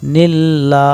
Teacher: নুন লাম জের নীল, আল্লাহ শব্দ বারিক, আল্লাহ শব্দর পূর্বে জের, আল্লাহ শব্দ বারিক করিয়া পড়িতে হয় বা পাতলা করিয়া পড়িতে হয় নীল্লা। এখানে কিন্তু নীল বলা যাবে না, কারণ আল্লাহ শব্দর পূর্বে